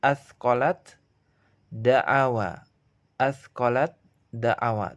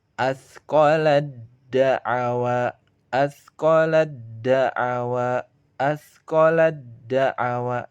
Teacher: Tapi cara membacanya kita leburkan ta sukunnya ke dalam da. Menjadi asqalad da'awa, asqalad da'awa, asqalad da'awa.